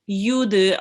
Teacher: Try to read the ayn from your throat, from the middle of your throat.